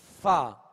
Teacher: اوپر کے سامنے والے دونوں دانتوں کے جو کنارہ ہے وہ نچلے ہونٹ کے تر حصے سے لگے تو فا ادا ہوتا ہے، فا۔ اس کو فا واو کی طرح ادا نہیں کریں گے اور نہ ہی دونوں ہونٹوں کو ملا کے پھا پڑھیں گے، بلکہ اوپر کے سامنے والے دو دانتوں کے کنارے اور نچلے ہونٹ کا تر حصہ یہ مخرج ہے یعنی نکلنے کی جگہ ہے فا کے.